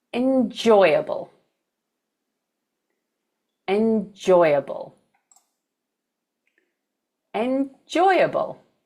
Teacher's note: four-syllable word where the stress is on the second syllable